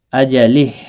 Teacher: हा साकिन पढ़ा जाएगा, वक़फ़ की सूरत में, मिलाने की सूरत में एक अलिफ की मिकदार के बराबर खींच कर पढ़ा जाएगा।